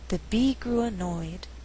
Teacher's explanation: this sentence we have three content Words Be grew annoyed but I choose not to stress grew so that I have alternating stress